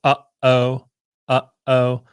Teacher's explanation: you have to close off the back of your throat in order to start the next sound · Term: glottal stop